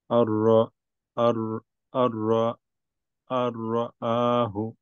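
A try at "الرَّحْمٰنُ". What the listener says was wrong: রটা আরেকটু হেভি করতে হবে। আর রাহু, আর আর রাহু।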